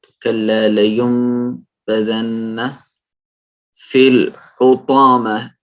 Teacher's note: اقلاب. جی، نون ساکن کے بعد کیونکہ با آ گیا ہے اس کو ہم میم میں بدل دیں گے نون کو اور اقلاب کر دیں گے.